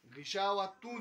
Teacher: غشاوتون ناک سے پڑھنا ہے تاکہ یہ غنہ کے ساتھ ادغام ہوگا